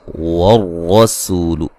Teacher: جائز ہے، احد نون تنوین کا ادغام مع الغنہ ہے، والرسول را کو موٹا ادا کریں گے، را کے اوپر زبر ہے